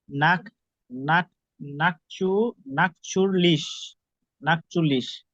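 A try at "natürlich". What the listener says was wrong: নাট্রিউলিশ, হ্যাঁ নাট্রিউ, ইউ উচ্চারণ হবে নাট্রিউলিশ। নাট্রিউলিশ, হ্যাঁ নাট্রিউলিশ। নাট্রিউলিশ, উচ্চারণ হচ্ছে।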